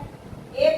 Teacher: ए का उच्चारण स्थान होता है कंठ और तालु होता है।